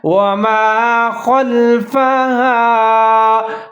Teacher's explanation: خا کو آپ نے موٹا کر کے پڑھنا ہے